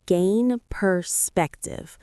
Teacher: The stress is on the second syllable of perspective.